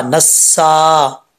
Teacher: एक अलिफ की मिकदार इसको लंबा करेंगे, अब बीच में अलिफ और लाम गिर जाएगा। सीन जो है वो सीटी के साथ पढ़ा जाएगा, बरीक होता है।